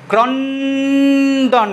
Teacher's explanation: যখন আমরা ভাঙবো এটাকে, মাঝখানে কোনো স্বরধ্বনি থাকবে না।